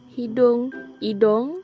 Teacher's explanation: penggantian vokal belakang sempit u kepada vokal belakang separuh sempit o